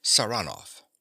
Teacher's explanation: He pronounces the name with a stress on the second syllable